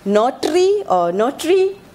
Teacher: So in almost all cases, the r is actually produced as either a tap or a trill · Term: tap, trill, r